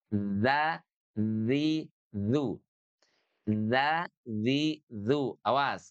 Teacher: ujung lidah kita perhatikan ini bertemu dengan gigi seri atas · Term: huruf dalal